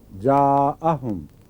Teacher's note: جہاں بھی الف آئے اور بعد میں وہ الف حمزہ شروع ہو جائے، جاءہم، وہاں آ پڑھنا پڑتا ہے، لمبا کرنا پڑتا ہے، ورنہ جا مل جاتا ہے بعض دفعہ ایک الف میں ہی تبدیل ہو جاتا ہے.